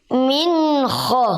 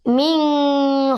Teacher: nun sukun bertemu ko maka membacanya jelas jelas Minho coba Min Kho tidak boleh mining Iya jangan ada dengungnya